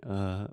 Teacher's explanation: it's really short it's really soft I'm reducing the stress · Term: schwa